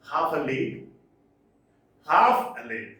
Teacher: one stressed syllable followed by two unstressed syllables